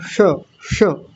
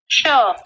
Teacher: ये जो श है ये जीभ को थोड़ा सा ऊपर मोड़ के बोलते हैं